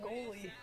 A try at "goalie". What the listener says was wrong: Goalie? That's not goal. Goalie.